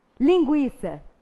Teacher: aqui não há um dígrafo, porque o G foi pronunciado e o U também foi. Ora, então o U aqui exerceu o papel de vogal.